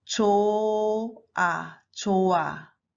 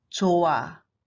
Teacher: If the final consonant contains h, h makes no sound. It's silent. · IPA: [조아]